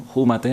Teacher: con aspiración de la f